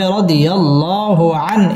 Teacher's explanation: ইজহার গুন্না ছাড়া স্পষ্ট করে পড়তে হবে